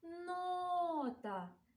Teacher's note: Наголос чуємо у першому складі.